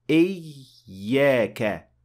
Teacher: you are supposed to show that there are two ya, إِيَّاكَ, not إِيَّاكَ.